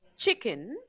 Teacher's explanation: we pronounce the first syllable che louder than kun, right? So it's a two syllable word, and this is what we mean by word stress, right?